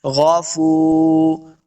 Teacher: غفو فا پیش واو فو، واو مد ہے، اس کو 2 حرکات لمبا کریں گے